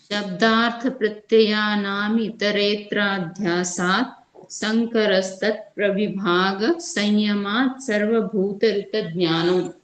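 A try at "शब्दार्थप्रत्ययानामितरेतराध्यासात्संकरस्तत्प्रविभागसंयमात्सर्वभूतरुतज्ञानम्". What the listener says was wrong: बहुत बढ़िया जी।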